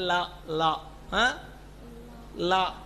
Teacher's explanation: இந்த லாவுக்கு நாக்கு எந்த இடத்துல முட்டணும்? நுனியில், பல்லுக்கு நுனியில்.